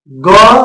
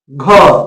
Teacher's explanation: ग में कम वायु निकलती है जबक घ में अधिक वायु निकलती है अंग इसम भी कम